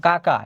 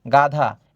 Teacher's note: যেসব ব্যঞ্জনধ্বনি উচ্চারণের সময়ে জিভের পিছনের অংশ উঁচু হয়ে আলজিভের, আমাদের যে ছোট আলজিভা আছে, আলজিভার কাছাকাছি নরম তালুর কাছে বায়ুপথে বাধা সৃষ্টি করে, সেগুলোকে বলা হয় কণ্ঠ ব্যঞ্জন।